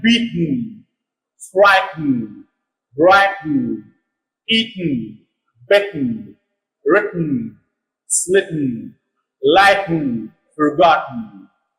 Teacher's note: at the end we have TEN, E is pronounced schwa, and the last syllable is not stressed. In American English, we make this silent. · the place of articulation of T and the place of articulation of N both are the same